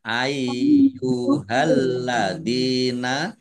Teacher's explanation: Ya-nya dibaca double dibaca ai dulu